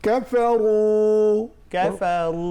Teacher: র তাকরীর হবে, মোটা করে পড়তে হয়